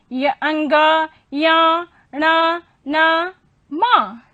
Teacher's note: इनके उच्चारण में श्वास हमारी जो है वो अंशतः नासिका से बाहर निकलती है। श्वास हमारी नासिका से अंशतः, पूर्ण रूप से नहीं, अंशतः बाहर निकलती है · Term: अनुनासिक वर्ण